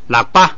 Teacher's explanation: 本来是拉，本来要降下来的，但是前不降，所以把降的那一半去掉，只剩下升